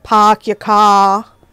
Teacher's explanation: England accents tend to have the non-rhotic R's